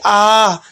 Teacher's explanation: हास स्वर से हमें थोड़ी ज्यादा मेहनत करनी पड़ेगी थोड़ा ज्यादा शब्द को खींचना पड़ेगा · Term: दीर्घ स्वर